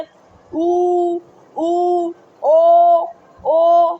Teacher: और जिनके उच्चारण में ओठ जो है वह गोलाकार हो जाते हैं वह व्रत मुखी स्वर कहलाते हैं।